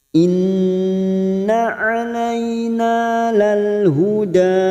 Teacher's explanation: nun yang bertasdid gunna musaddada ditekan selama 3 harokat